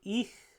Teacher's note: ich which is the high front tense vowel so but we get the palatal fricative with this one so